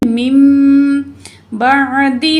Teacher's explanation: नून की आवाज़ को मीम से बदल के पढ़ेंगे